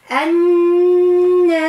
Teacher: نون مشددة مشددة نعطيها حق في الغنة الفرعية